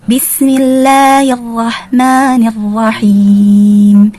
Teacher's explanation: Allah dibaca tipis setelah terletak setelah mim yang berharokat kasrah.